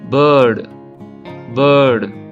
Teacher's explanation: ఈ స్వ కి దీర్ఘం ఇచ్చినట్లయితే అంటే సుమారుగా అంటే ఎగ్జాక్ట్ గా కాదు కొద్దిగా ఈ స్వక దగ్గరగా ఉండి దీర్ఘం కలిగిన సౌండ్ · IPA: ɜː